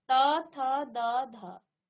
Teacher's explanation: त, थ, द, ध ये आपके दांतों को स्पर्श कर रही है।